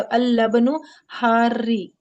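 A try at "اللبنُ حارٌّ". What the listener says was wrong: री कहाँ है? हार रुन। रुन। रा दो पेश रुन। हारून।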